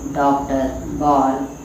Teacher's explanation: आगत स्वर अ, इसका उच्चारण अ और ओ के मध्य की ध्वनि के समान होता है और इनका प्रयोग आ के रूप में किया जाता है।